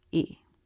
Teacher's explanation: when unstressed it's lower and flatter in Pitch quieter and faster